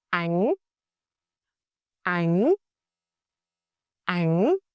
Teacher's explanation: Sắc, pitch rises sharply, like when you ask a quick yes-no questions. Throat feeling slightly push upward.